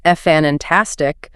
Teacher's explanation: Stressing the first syllable when it should be on the second